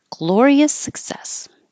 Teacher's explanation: your tongue goes to the back, but you don't have to hear the K